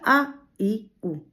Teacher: शिथिल स्वर जिसमें जीह की किसी भी मांसपेशी पर कोई असर नहीं पड़ता। वो शिथिल रहती हैं।